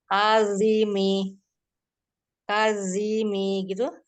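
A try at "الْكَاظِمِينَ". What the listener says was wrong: bukan zi, tapi li. Kalimi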